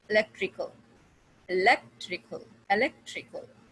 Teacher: you will put a stress on the third from the last syllable. The last syllable is kal, electrical, electrical, electrical.